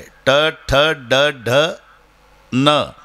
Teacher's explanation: मूर्धन्य टाळूशी संबंध जिभेचा येतो · बाणाच्या नचा उच्चार करताना संबंध जिभेचा दाताशी नाही.